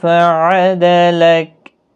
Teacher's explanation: صرف یہاں پر وقف کی صورت میں کاف ساکن پڑھا جائے گا، باریک کاف ہے، خاص خیال رکھیں۔